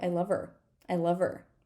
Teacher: her can sound like I love her I love her right we don't need to say this H we drop a lot of H's